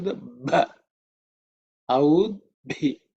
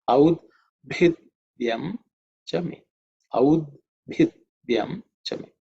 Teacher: That bha is fourth letter in the pa varga, so it has to be aspirated with mahaprana, with extra air.